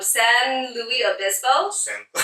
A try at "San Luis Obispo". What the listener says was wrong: Luis Obispo. Louis. There's no E in there.